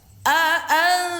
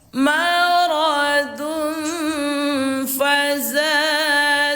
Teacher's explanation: Nah, bertemulah dengan salah satu huruf ikhfa ini, yang 15 ini, maka dibacanya samar. Pada umumnya seperti berbunyi eng, lalu tahan suara 2 harokat.